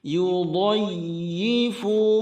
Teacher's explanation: hentakan ya pada tasydid, itu harus terdengar jelas. Yudayyifu, fu 2 harakat.